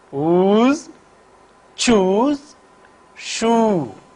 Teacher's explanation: In the production of the vowel oo, back of the tongue is raised to a position almost near close. The lips are in rounded position. It can occur initially, medially and finally in words.